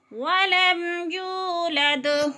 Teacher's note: تو واو مدہ کو ایک الف کے برابر کھینچ کر پڑھنا ہے